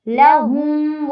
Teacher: لہم میں لام کی زبر کو واضح کر کے پڑھنا ہے، اور ہم پہ غنہ یا اخفا کچھ بھی نہیں کرنا۔